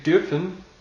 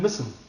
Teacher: Dürfen is a longer umlaut sound, and müssen is what we call a short umlaut sound. Right? So müssen actually drops the umlauted U for just a regular U, which has a slightly different sound.